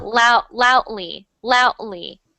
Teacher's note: the funny thing is the D is not really there